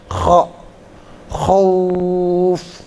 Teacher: kha itu makhrajnya di potongan, ya, kayak kita buang dahak